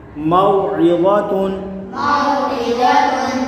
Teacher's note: حرف لین کو بغیر کھینچے بغیر جھٹکے دیے نرمی سے معروف پڑھیں گے۔ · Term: واولین